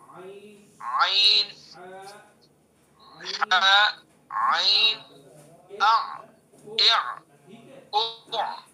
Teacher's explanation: وسط حلق یعنی حلق کا درمیانی حصہ، حلق کے درمیان سے اس کو نکالنا ہے